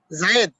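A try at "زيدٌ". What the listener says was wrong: জাইদুন। জায়েদ বা জাইদুন? জাইদুন বলেন না, যেভাবে শিখেছেন।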